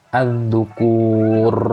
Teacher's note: r-nya tuh takrirnya terlalu banyak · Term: Terlalu menggetarkan ro